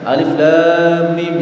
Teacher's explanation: lamnya sama mimnya sama-sama dibaca 6 harokat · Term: mad lazim harfi